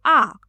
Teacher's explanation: उच्चारण करते समय पूरा मुख खुल जाता है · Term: विवृत स्वर